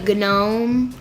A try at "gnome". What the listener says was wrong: There's no G. The G is silent.